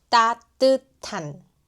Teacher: The 받침 시옷 meet 히읗 and they merge into T sound. 따뜻한. 못 일어나겠어요.